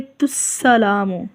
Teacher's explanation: کریں گے تو ہم اس کو پڑھیں گے تسلام، ٹھیک ہے، حمزہ کو حذف کر دیا جائے گا